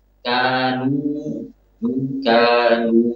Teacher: kanu dibaca dengan sempurna memonyongkan kedua bibirnya